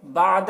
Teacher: عین کو ظاہر کر کے حلق سے ادا کریں گے